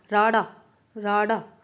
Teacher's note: ਜੀਭ ਤਾਲੂ ਨਾਲ ਛੂਹ ਕੇ ਫਟਕਵੇਂ ਨਾਲ ਹੇਠਾਂ ਮੁੜਦੀ ਹੈ, ਭਾਵ ਕਿ ਐਵੇਂ ਇੱਕੋ ਦਮ ਨੀਚੇ ਉੱਠਦੀ ਹੈ, ਤਾਂ ਉਹ ਫਟਕਮਾ।